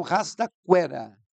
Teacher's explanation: O U é uma semivogal e o E é uma vogal. Então, de semi para vogal, aumentou. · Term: ditongo crescente